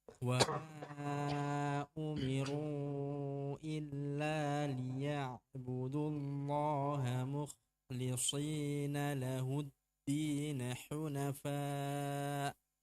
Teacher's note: Nah, kha jangan sampai menjadi ha. Jangan muhlisi. Ya, harus tetap di ujung tenggorokan.